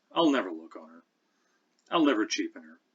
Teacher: We never have this written in Old English, but here in early modern English, we can see that this word will is becoming such a habitual part of verb phrases that it's being diminished in pronunciation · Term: contracted forms